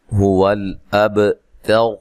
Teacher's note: ہا کو اس کے مخرج سے نکالنا ہے جو کہ اقصی حلق ہے، لام کو ہلانا نہیں ہے۔